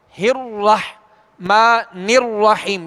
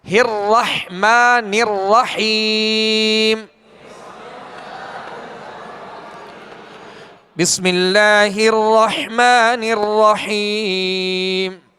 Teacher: را پر اب زبر ہے تو اب اس کو ہونٹ گول نہیں کرنا بلکہ آواز اور منہ کھول کر پڑھنا ہے۔ جیسے بسم اللہ الرح، اب ہونٹ گول کریں گے، الرحمن الرحیم، یہ طریقہ درست نہیں۔